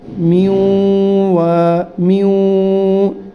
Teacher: نون کو واو میں داخل بھی کر دیا اور ساتھ غنّہ بھی کرنا ہے